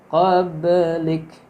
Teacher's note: Ba-nya ini huruf ba mati itu qalqalah yang dibaca mantul. Yang ada di tengah-tengah berarti qalqalah sughra.